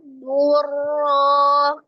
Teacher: Ro-nya berharokat fathah dibaca tafkhim atau tebal ya. Ro berharokat fathah ataupun dhamma dia dibaca tebal.